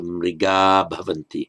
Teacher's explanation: Mriga on its own with Visarga, followed by a voiced consonant, the Visarga drops out